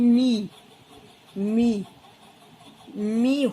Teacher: होठ बंद हो जाएंगे और आवाज जो है गले से अंदर जाएगी